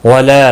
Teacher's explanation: لا الف مدہ ہے، ایک الف کے برابر کھینچ کر پڑھیں گے